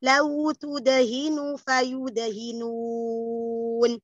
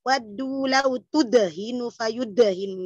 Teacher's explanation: Lau tudah, kol-kolanya sughra yang kecil.